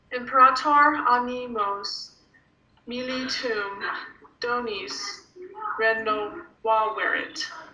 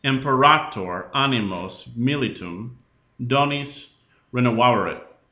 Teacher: All right, everybody in Rome is going to think you're from France because you're reading your Latin with a French accent. Because you're lifting that last syllable a bit. · It was very much not accented on the last syllable at all